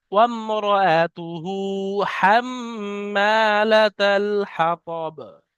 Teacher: হাম্মা মিমের উপরে তাসদিদ আছে, মিম তাসদিদ একালি পরিমাণ গুণনা হবে